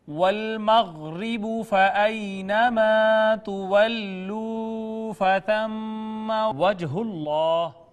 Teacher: دیکھیے یا ما قبل مفتوح ہونے کی وجہ سے یا لین ہے، الف ما قبل مفتوح ہونے کی وجہ سے الف مدہ ہے، واو ما قبل مضموم ہونے کی وجہ سے مدہ ہے، میم مشدد ہونے کی وجہ سے اس پہ غنہ کیا، جیم ساکن حروف قلقلہ میں سے قلقلہ کیا.